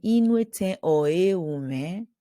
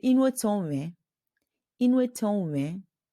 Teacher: But more often, you won't even hear the oe. They will drop it.